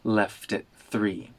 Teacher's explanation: the T in at turns into a glottal stop